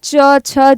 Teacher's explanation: च, छ, ज ये सब किससे बोला जाता है? तालु से बोला जाता है।